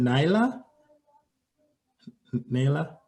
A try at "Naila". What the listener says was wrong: It's Naila. The I is an E.